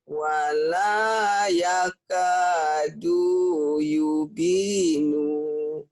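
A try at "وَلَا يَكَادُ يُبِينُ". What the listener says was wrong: dunya sama nunya pendek. Nunya pendek. Kan nggak ada yang manjangin. Karena ini lagi melatih disiplin mana bacaan panjang, mana bacaan pendek. Jadi nggak boleh baca wala yakadu yubino. Yubino pendek.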